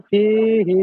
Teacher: ইয়া সাকিনের ডান দিকে জের এসেছে, একে ইয়া মাদ্দা বলে এক আলিফ পরিমাণ টান দিয়ে পড়তে হবে